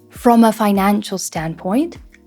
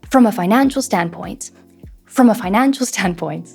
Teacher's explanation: We say those first 2 words very quickly and we elongate our content words a little bit more